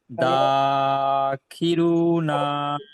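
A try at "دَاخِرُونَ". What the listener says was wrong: না টান হয়ে যাচ্ছে না টান হবে না জাবারটি বলবেন না আলিফের ডান দিকে জাবার আছে তাই এটি আলিফ না যা বলবেন আলিফের ডান দিকে জাবার আছে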